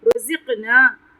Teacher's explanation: را پہ تفخیم کریں گے، قاف پہ قلقلہ کریں گے اور تفخیم کریں گے